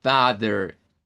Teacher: la lengua tiene que retractarse un poco hacia el fondo en nuestra boca, eso le da como cierta sonoridad a este sonido como de gravedad. Porque si usted dice a en el español a no es muy grave, pero si usted dice haciendo su lengüita para atrás, en su cavidad bucal sí encontrará ese sonido un poco más grave. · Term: open back a